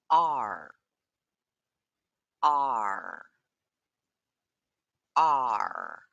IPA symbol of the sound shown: ɑr